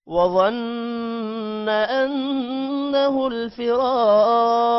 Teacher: غنہ کرنا ہے انه نون پر یہاں پر بھی غنہ ہوگا فراق را کے بعد الف لمبا کریں گے